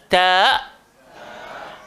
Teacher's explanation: Hujung lidah, langgar belakang gigi atas. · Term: huruf ta